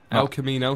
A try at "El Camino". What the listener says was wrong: Not Al. El Camino.